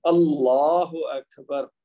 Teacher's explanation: جب ہم خالی اللہ پڑھیں گے تو اس کے ساتھ پھر لام کو موٹا ہی پڑھیں گے